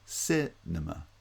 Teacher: The second and third syllables both have vowel reduction because they're unstressed syllables. N-ma. Cinema.